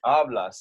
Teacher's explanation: Because this word ends with an S, right? So the stress naturally falls on the second to last syllable, which in two-syllable words is the first syllable